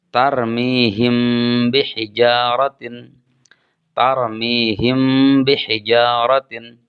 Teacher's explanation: huruf mim mati disembunyikan dengan dibaca samar antara jelas dan berdengung. Contoh, tarmihim bihijaratin. · Maka disebut ikhfa syafawi apabila ada huruf mim mati bertemu dengan huruf ba. Cara membacanya, huruf mim mati disembunyikan dengan dibaca samar antara jelas dan berdengung.